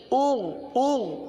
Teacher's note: تو غین میں قلقلہ نہیں ہوتا اور غین کو گاف کی طرح نہیں پڑھتے